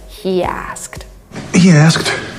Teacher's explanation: we have this extra Y between these two words, and this is why it sounds like he asked. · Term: intrusion